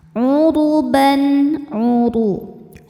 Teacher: huruf ro dibaca secara tafkhim karena harokatnya di atas yaitu harokat dhammah. Cara bacanya ro dibaca dengan tebal.